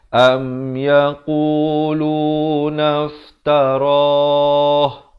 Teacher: Roh dipanjangkan sekurang-kurang 2 harakat di situ.